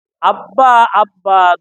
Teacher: দুই ঠোঁটের শুকনা জায়গা হইতে বা